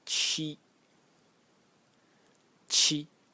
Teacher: pronounced chi, chi in the first tone